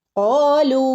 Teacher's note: ഖാലൂ ഇവിടെ നോക്കൂ, ലൂ എന്ന് പറഞ്ഞിട്ട് അവിടെ ഒരു മദ് വന്നിട്ടുണ്ട് അല്ലേ, മദ്. ഈ ഒരു മദ്ദിനെ നമ്മൾ രണ്ട് അനക്കം മുതൽ 4 അനക്കം വരെ നീട്ടി ഓതാവുന്നതാണ്.